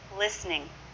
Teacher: notice the T is silent there that's not part of the syncope that's just the pronunciation